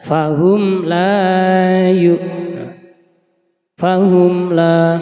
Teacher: fahum mim sukun yang bertemu lam ya bacaan zhar syafawi harus dibaca jelas